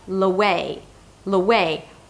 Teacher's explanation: the L becomes the beginning of the next word, which is away